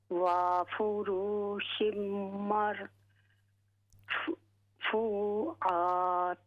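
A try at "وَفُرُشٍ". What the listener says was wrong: وفورو را کو ہم نے لمبا نہیں کرنا. وفورو وفروشم.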